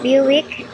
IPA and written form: ˈbjuːɪk (Buick)